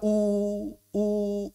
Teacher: Saat kita dah maka bibir kita bergerak juga. U u lidahnya bergerak juga ke belakang